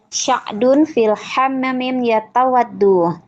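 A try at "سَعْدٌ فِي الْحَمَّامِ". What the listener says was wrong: Sa'dun, pakai sin. Sa'dun fil hammami.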